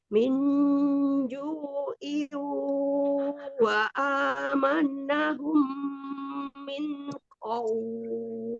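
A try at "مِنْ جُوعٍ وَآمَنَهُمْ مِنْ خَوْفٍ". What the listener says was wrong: Ya, sempurnakan lagi gunnahnya. Min ju'i wa amanahum min khawf. Ada izhar di situ, nun sukun bertemu dengan huruf kha. Bacanya jelas, tetapi nunnya mengalir sebagian ya, dialirkan tidak dipantulkan.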